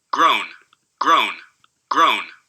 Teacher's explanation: still uh you know a syllable with four sounds in it the vowel is a mid-back rounded vowel it ends in a coronal nasal